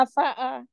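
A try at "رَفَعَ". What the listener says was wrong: आइन अगेन। आइन नहीं आ रहा, आइन निकालिए। आइन में ये हलक के बिल्कुल मिडल से आएगा।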